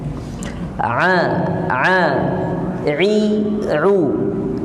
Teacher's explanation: Orang Yaman nyebut ain itu betul-betul di dalam